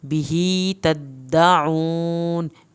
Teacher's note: बिही तद्दाऊन, बिही खड़ी ज़बर को खींचना है, तद्दाऊन दाल पे की शद अदा करनी है, आइन को हल्क से पढ़ना है, वाव साकिन को खींच के पढ़ना है